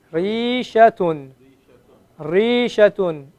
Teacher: The raw is being elongated.